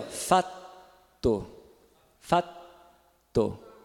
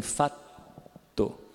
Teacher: Agora, como que alonga um T, se o T é oclusivo e ele não é continuante? Então, você vai ficar com a língua lá, sem soltar a oclusão. Então, vai segurar um pouquinho no T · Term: T alongado